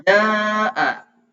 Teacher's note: Itu bacanya lebih panjang. Hukumnya mad wajib muttasil. Bacaannya panjangnya adalah 6 harokat.